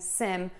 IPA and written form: sɪm (SIM)